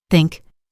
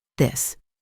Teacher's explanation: Think is soft. This is voiced.